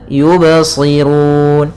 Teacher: di sini ba-nya tidak boleh ada tambahan hamzah ketika qalqalah